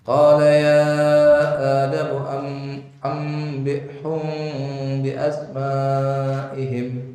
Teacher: Itu juga mim mati ketemu dengan ba. Qala ya Adam amnya itu nun mati dibaca mim. Ambihum. Humnya itu hum disamarkan.